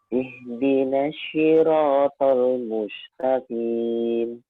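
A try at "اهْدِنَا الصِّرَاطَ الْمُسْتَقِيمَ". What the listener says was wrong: Ihdinas siratal mustaqim. Sod ini hampir sama dengan sin. Makhrajnya sama. Cuman lidah yang sod itu dia naik, lidah belakangnya. Nah, jadilah huruf sod. Nah, bukan dengan monyong ya, bukan swi. Nah, ihdinas siratal mustaqim. Nah, itu kurang tepat. Kemudian qaf juga jangan terlalu dalam ya. Bukan ihdinas siratal mustaqim.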